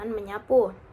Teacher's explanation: M + sapu menyapu. Itu karena n menjadi ny karena s adalah alveolar yang luluh dan diserap menjadi palatal sebelum vokal